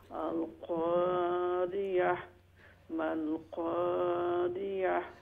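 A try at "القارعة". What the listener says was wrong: আইনটা আরো একটু ডিপলি হইতো একটু।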